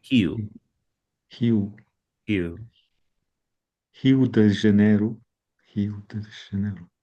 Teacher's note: R's So on the the R is dropped. Yeah, R's on the beginning of words. It's not dropped, it makes an H sound.